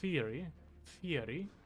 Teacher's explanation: I always say theory like an F